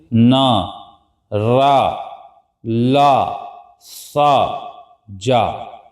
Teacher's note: हमारी जीभ और दांत के ऊपर जो हिस्सा है वहां से ध्वनि निकलती है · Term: वात्स ध्वनि